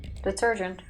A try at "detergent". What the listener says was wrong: You say detergent. You hear it, right? She pronounces the G like the S in Asian. Detergent. It's detergent. Detergent. They didn't say it like that.